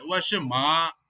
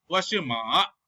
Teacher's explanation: instead she needs to say straight tone, okay, instead she is saying falling and rising tone